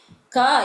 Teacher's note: क इति वर्णः कण्ठे वयं क इति यदि उच्चारणं कुर्मः तस्मिन् समये तस्य स्थानमस्ति कण्ठः